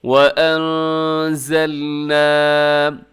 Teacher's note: یہاں پر نون ساکن کے بعد زا ہے تو یہاں پر آپ نے اخفا کرنا ہے، آواز کو ناک میں چھپانا ہے۔